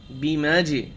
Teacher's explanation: বা জের বি মিম জিম জবর মাঝে কলকলা হবে